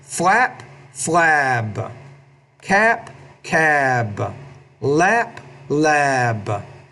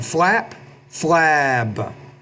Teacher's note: when the B's at the end of the word, because it's a voiced consonant, the vowel before it should be a little bit longer